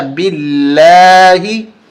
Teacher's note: लफ्ज़ अल्लाह से पहले वाले हरफ बा पे ज़ेर है तो बारीक करके पढ़ा जाएगा